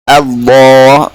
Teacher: Lam ditafkhimkan ya pada lafzul jalalah ya.